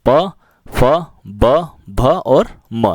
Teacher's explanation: जिन ध्वनियों के उच्चारण में दोनों होठ आपस में मिलते हैं उन्हें ओष्ठ व्यंजन कहते हैं।